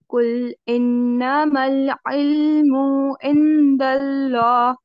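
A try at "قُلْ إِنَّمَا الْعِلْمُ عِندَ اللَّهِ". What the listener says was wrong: कुल, कॉफ को हैवी करिए और काफ वाला साउंड नहीं आएगा इसमें।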